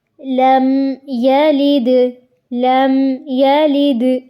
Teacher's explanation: اظہار کا مطلب ہوتا ہے ظاہر کرنا، یعنی صرف میم کی آواز کو ظاہر کیا جائے گا، اس پہ غنہ نہیں کیا جائے گا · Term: اظہار شفوی